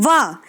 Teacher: जैसे ही आप व का उच्चारण करेंगे तो आपके ऊपर वाले दांत आपके निचले वाले होठ से टकराएंगे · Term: दंत ओष्ठ्य